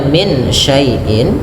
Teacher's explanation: Karena adanya nun sukun bertemu syin maka nunnya disamarkan dibaca antara idgham dan izhar. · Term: ikhfa hakiki